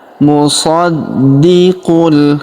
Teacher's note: Huruf di kita tahan dan kita tekan karena terdapat tanda tasydid di atasnya.